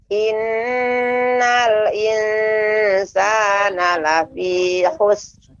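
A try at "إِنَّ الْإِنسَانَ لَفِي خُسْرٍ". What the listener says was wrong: Ya, diberikan ro-nya juga Ibu. Lafi khusr. Adapun lafi khus berarti kita tidak memberikan ro. Ya, kita menghilangkan ro. Lafi khusr.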